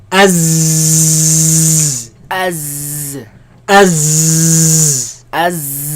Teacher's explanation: There's a lot of commotion, a lot of air, a lot of movement of air between the tongue and the teeth.